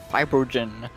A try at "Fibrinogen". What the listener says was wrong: not how you say his name. I want to say it's Fibrinogen. There's an N in there. You just said Fibrinogen.